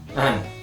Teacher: the duh sound gets dropped very commonly in spoken English and becomes n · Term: reduction